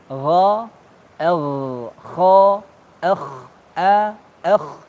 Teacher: ini ghain dan kha, dia tenggorokan bagian atas